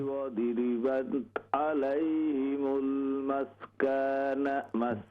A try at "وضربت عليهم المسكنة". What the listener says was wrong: ضاد پر زبر پڑھیے بغضب من الله وضربت عليهم المسكنة